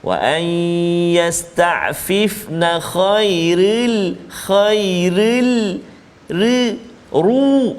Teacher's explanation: ini adalah contoh-contoh huruf ra yang kita kena baca tebal, iaitu ra yang berbaris di atas dan juga ra yang berbaris dhammah